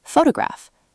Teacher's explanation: The stress falls on the toe part, and that beat stays consistent.